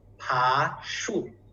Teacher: the first 爬 is up, 树 is down.